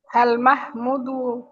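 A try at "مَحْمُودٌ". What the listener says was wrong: মাহমুদ না, মাহমুদুন, তানবিন সহ মাহমুদুন।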